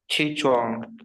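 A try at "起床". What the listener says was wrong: च्वांग नहीं है, छुआंग। छ मैंने बोला, आप पहले प्रोनाउंसिएशन में आगे बढ़ाऊंगी नहीं।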